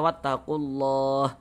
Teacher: Huruf ha tidak dibaca panjang, berhenti kita di huruf H, maka kita matikan ya, kita sukunkan sehingga dibaca wattaqulah seperti itu